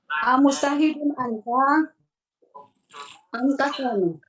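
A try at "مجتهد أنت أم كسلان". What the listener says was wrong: Nah, cuma intonasi pertanyaan harusnya Bu. Gitu ya, pertanyaan.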